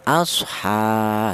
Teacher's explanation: huruf ha ini walaupun tidak ada alifnya tapi harokatnya berdiri juga dibaca panjang, yaitu matobi satu alif atau dua harokat atau dua ketukan